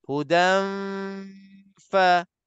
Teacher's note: sambil kita dengung 2 harakat, gigi atas kita dah sentuh bibir mulut bawah. Sebab itulah tempat keluarnya huruf fa. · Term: ikhfa